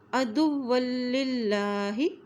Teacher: اس لام کے اوپر کھڑی زبر بھی ہے اس لیے اس کو ایک حرکت لمبا بھی پڑھیں گے۔ عدوا للہ، اللہ کا نام باریک ہوگا کیونکہ اس کے نام سے پہلے یہ للہ زیر ہے۔